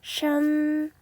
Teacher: 시옷 소리인데 혀를 말아 올려서 느끼하게 발음합니다. A는 아 소리가 나고 N은 받침 니은으로 가볼게요. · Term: SH